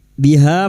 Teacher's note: Biha fathah diikuti alif ha 2 harakat kita panjangkan mat tabi'i